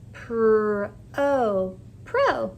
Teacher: I say my long sound here since it's an open syllable does not end in a consonant PR o Pro my first syllable says Pro here's my second